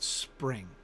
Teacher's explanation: the p is softer because it's got that sibilant before it